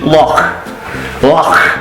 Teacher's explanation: comes from like the back of the throat it's like a little bit of phlegm in the back there that's where it comes